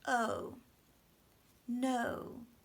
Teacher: No's a word that oftentimes people don't quite move their mouth enough for the O. It has to get really small at the end.